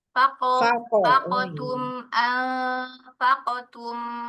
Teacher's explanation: Huruf 'q' seharusnya langsung terpental. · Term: Qalqalah